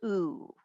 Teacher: there is no glide when it says ooh